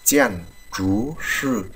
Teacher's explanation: Thứ nhất đó là chèn chú sư, chúng ta đọc lại này, chèn chú sư, chữ chú sư là chúng ta đọc hơi cong lưỡi một chút nặng như chữ chờ của mình